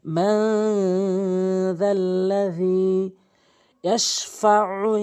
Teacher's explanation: মান যাল্লাযী ইয়াশফাউ, এখানে গুন্না করবেন, ইকফায়ে গুন্না মানে নাকের ভিতর নিয়ে পড়বেন